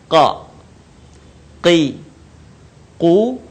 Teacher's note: Huruf ini keluar dengan menyentuhkan pangkal lisan kita dengan langit-langit bagian belakang. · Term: huruf qa